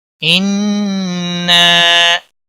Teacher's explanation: नून मुशद्दद पर गुन्ना होगा। नून मुशद्दद और मीम मुशद्दद जहाँ पर भी हों उन पर गुन्ना होता है।